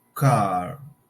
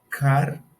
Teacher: car in British English sounds car without R. In American English, the R is pronounced.